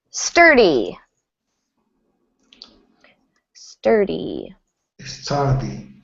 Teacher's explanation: stress on that first syllable, sturdy